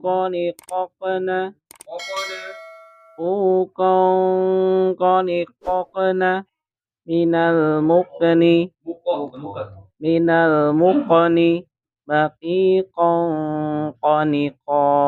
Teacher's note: Pangkal lidah paling belakang itu huruf qaf di situ ya. Jadi bukan tenggorokan, tapi di lidah.